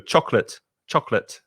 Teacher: most spanish speakers have three syllable pronunciation with chocolate no it's only two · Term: two syllables